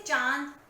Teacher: अनुनासिक कहते हैं यह नाक और गले से निकलती है